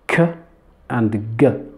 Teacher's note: the back of the tongue touches the soft palate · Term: velar sounds